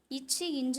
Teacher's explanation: நாவின் இடை அன்னத்தின் அடியை வந்து தொடுறதால பிறக்குது